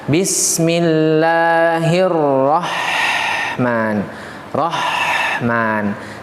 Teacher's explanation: huruf H tengah tenggorokan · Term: H kecil